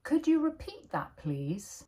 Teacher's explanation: notice the rising intonation when asking for repetition.